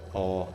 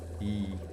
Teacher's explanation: Näiteks A puhul on keel hästi all ja I puhul on keel hästi üleval ja ees.